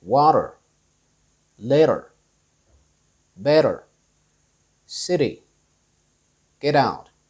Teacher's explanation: when the letter t comes in between two vowels or when it's surrounded by vowels americans pretty much use the d sound instead of the t sound · So they change the T sound into the light D sound. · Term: flap t, flap T